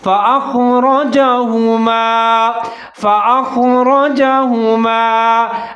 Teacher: را کے اوپر زبر ہے، را کو موٹا پڑھنا ہے ، آگے جیم کے اوپر زبر ہے، ہا کے اوپر پیش